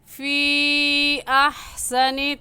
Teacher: اس مد کو 3 الف کے برابر کھینچ کر پڑھیں گے، نہ اس سے کم اور نہ ہی اس سے زیادہ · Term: مد منفصل